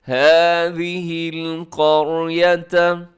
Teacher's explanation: جو قاف ہے وہ بھی ہمیشہ موٹے پڑھے جانے والے حروف میں شامل ہے۔ هَٰذِهِ الْقَرْيَةَ، آگے فَكُلُوا، لمبا کیجیے گا، واو مدہ ہے آخر میں۔ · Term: موٹی